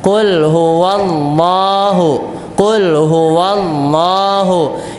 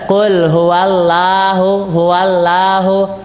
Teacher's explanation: Allahnya di sini menjadi Allah tebal tafkhimah di tebalkan Qul huwallahu Qul huwallahu yang menjadi salah kalau Allahnya menjadi tipis · Tebal ya, Pak ya. Allahnya di sini menjadi Allah tebal, tafkhim. Nah, ditebalkan.